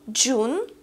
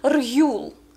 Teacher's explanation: нас звёздочка с Ю есть особенность которая заключается в том что после звуков дж и р мы ю произносим не как ю в открытом слоге а просто как у например слово джун это июнь месяц джун первый здесь звук дж